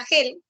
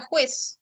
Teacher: luego tienes la fricativa velar sorda te decía no esta puede aparecer representada por la letra g